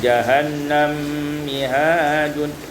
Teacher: idghamul mim fil mim, diidghamkan mim dan mim